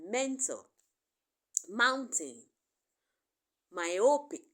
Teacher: so air is able to escape through the nostrils thereby producing thereby producing a nasal sound